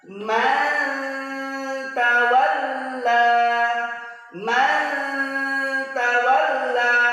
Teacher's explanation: suara n-nya tidak jelas Kenapa karena lidah kita sudah membentuk huruf yang dijumpai nya Huruf apa Huruf Ta Maka ketika kita mengucapkan Man lidah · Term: Ikfa Hakiki